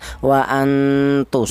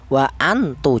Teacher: nun mati ini dibaca samar atau cara bacanya disamarkan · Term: ikhfa